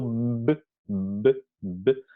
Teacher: Pero, por ejemplo, si pronunciamos sonido B, B, B, vamos a notar que las cuerdas vocales vibran antes de hablar, que la fonación ocurre antes de pronunciar